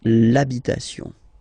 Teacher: even if you've got this H, then the first sound you hear is A